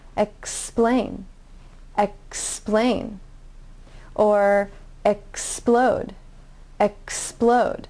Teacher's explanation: you don't have a vowel sound between the ks and p sound so it's a cluster of three sounds